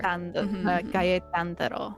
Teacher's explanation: it's kaetandaro, not kattandaro. There's two vowels there.